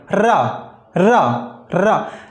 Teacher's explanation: चलो यहीं बता ही देते हैं आपको, ये जो हमारा रा होता है, रा ये हमारा होता है लुंठित व्यंजन, क्योंकि हम जब रा बोलते हैं तो हम देखते हैं कि हमारी जीभ लुढ़कते हुए आगे जाती है